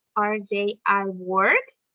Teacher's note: Comenzamos con una entonación baja, are they at work? Y subimos al final, para dar a entender que es una pregunta.